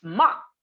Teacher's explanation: tone 4 is high falling